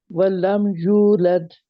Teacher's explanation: आपने होठ गोल करें और बाहर की तरफ निकाले यू कहने के लिए